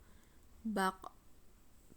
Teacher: Dalam posisi mati, maka terdengar memantul.